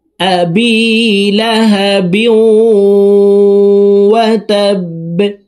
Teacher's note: বা কলকলার হরফ নিচের দিকে ধাবিত করে ধাক্কা দিয়ে বাকে সাকিন করে ফেলব